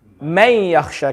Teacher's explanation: the noon is going to be skipped, and the ya will be read with a shadda. So it's going to become man yakhsha.